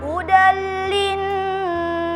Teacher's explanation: hudal linnasi, terdapat hukum idgham bila gunnah karena ada fathatain bertemu dengan huruf lam, dibaca dengan dileburkan.